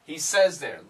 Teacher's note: this z sound will cancel the th